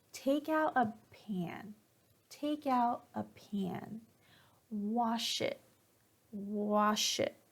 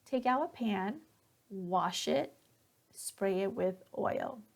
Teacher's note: instructions you're teaching somebody or telling somebody how to do something at the end of that instruction your intonation will go down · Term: falling intonation